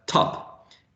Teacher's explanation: so turn / in initial position our aspirated okay because this there is this extra puff of air coming from the oral cavity